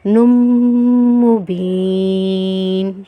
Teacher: ذکر وقرآن مبین، وقر، قاف کو رو سے ملائیں گے، وقر، حمزہ کھڑا زبر آ ہے، حمزہ پہ کیا ہے، کھڑا زبر ہے تو ایک الف کی مقدار کھینچیں گے۔ نون کو جب میم سے ملائیں گے تو غنہ کریں گے